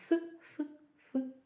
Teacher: він є глухим просуваємо язик між зубами та губами і говоримо ф ф ф ФК товстий огрядний густий щільний наприклад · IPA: [θ]